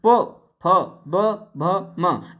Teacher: इनका उच्चारण स्थान कहाँ से है? तो इनका उच्चारण होंठ से है। देखिए आप बोल के देखिए होंठ से, प फ ब भ म, नेक्स्ट इनका उच्चारण स्थान कहाँ से है?